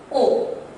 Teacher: अ और उ मिलके बना ओ। जब ओ का हम उच्चारण करते हैं तो हमारे होठ जो होते हैं गोल बन जाते हैं